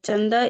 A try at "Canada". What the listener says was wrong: Canada. Canada. चंदा हाँ, यहाँ पे CA है.